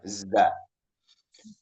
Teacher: dia jahar berdasarkan aliran napas, huruf zai ini jahar, ya nggak ada napas. Jadi suara tajam tadi bukan yang hamesnya ya, za dia tidak hames, ya dia tidak hames.